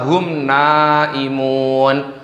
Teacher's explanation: Jadi mim sukunnya dibaca jelas. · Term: idhar syafawi